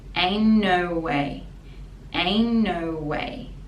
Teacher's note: the t is silent because it connects with no